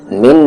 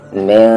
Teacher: نون ساکن کے بعد سین ہے اور سین حروف اخفا ہے، تو آواز کو چھپا کر پڑھیں گے